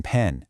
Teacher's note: The P sound in pen, you stop the air with your lips.